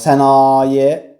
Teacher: Sənaye sözündə A-da da uzanma vardır.